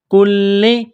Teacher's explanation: کاف کو باریک کرنا ہے، لام کو دبانا ہے تشدید کی وجہ سے